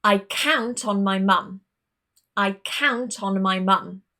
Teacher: The stress goes on the verb, not the object and not the particle.